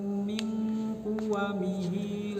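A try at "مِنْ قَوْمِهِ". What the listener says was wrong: Ya, hati-hati ini di min qaumihi bukan kuwamihi, min qaumihi.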